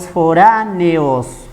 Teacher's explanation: vocal abierta con vocal abierta, la E con la O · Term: Hiato